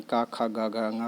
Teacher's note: का वर्ग को कोमल तालव्य भी कहा जाता है